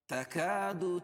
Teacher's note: الف سے پہلے کاف کے اوپر زبر ہے تو الف مدہ ہوگا، اس کو کھینچ کر پڑھیں گے ایک الف کا برابر